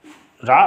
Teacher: रा सघोष है, सघोष और अल्प प्राण है, अल्प प्राण, ये कंडीशन बनती है इसकी।